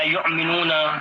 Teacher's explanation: حمزہ جو ہے نچلے گلے سے ادا کیا جائے گا